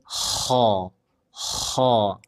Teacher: Kalau huruf kho, tenggorokan bagian atas.